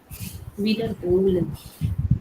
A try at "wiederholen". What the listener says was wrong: Make sure your Betonung liegt auf der zweiten Silbe. Not wiederholen, sondern wiederholen.